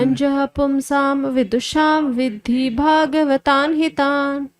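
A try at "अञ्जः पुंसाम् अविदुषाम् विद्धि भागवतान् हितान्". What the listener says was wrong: देखिए, पुमसाम बोल रहे हो आप तो अब भी आप बोलना पड़ेगा, नहीं तो म बोलिएगा।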